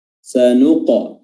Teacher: huruf qaf qalqalah, sanuqa ya, ada pantulannya dan ditebalkan dengan baik